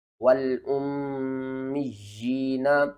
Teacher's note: میم یا زیر می، یا کھڑی زیر جیم، والأمی، یا کو آپ نے نیچے کی طرف کھینچنا ہے ایک الف کے برابر